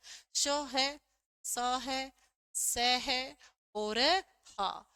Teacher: संघर्ष तो करें, संघर्ष करें स्पर्श करने के लिए, पर स्पर्श ना कर पाए, किसी भी उच्चारण स्थान का स्पर्श न कर पाए। संघर्ष तो करते हैं लेकिन स्पर्श नहीं कर पाते हैं। और ये संख्या में हमारे 4 होते हैं। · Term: संघर्षी व्यंजन